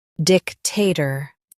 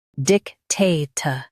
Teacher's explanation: In US, stress dic. In UK, stress tay.